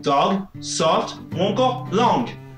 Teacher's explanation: Le son ɒ, lui, est pré-ouvert. · Pour le prononcer, prononcez un ɔ: en ouvrant un peu plus la bouche.